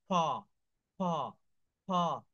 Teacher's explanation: যেমন দেখেন এখানে বলছে বাতাস বের হয়, এই যে অ্যাসপিরিয়েটেড সাউন্ড, এটা বলেন তো ফ, ফ, ফ। দেখেন ফ বললে আপনি একটু বলার সময় মুখের সামনে হাত রাখেন, একটা বাতাস চলে আসে